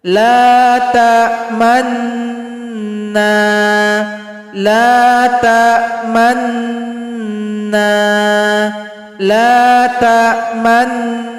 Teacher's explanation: kita monyongkan ketika di akhir gunnah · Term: ishmam